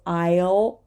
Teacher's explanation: And please remember that over here we have a dark L, so aisle, o, and we do not say this S either, right?